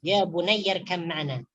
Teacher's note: Dengungkan dalam kalimat tersebut ketika memasukkan ba ke dalam huruf mim. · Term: idgham